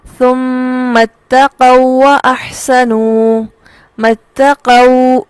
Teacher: یہ واو ساکن اور اگلا متحرک دونوں کے ملنے سے ادغام ہو رہا ہے